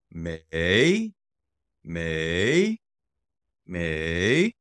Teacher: third tone up and down